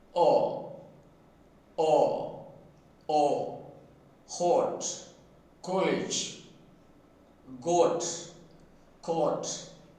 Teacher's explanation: in the case of English phoneme O, the lips are up rounded and open.